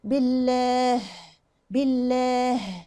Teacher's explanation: الهاء تطلع ليه؟ لأنها يعني عندي المخرج بتاع الهاء تحت خالص في الحلق، تحت، يعني عاوز مجهود عشان يطلع.